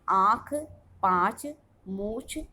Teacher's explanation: मुख व नाक दोनों से उच्चारित होने वाले वर्ण अनुनासिक स्वर कहलाते हैं। अनुनासिक का चिन्ह चंद्रबिंदु होता है, जैसे आँख, पाँच, मूछ आदि।